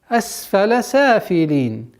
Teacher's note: Удержание на син немножко, так как свистящий звук.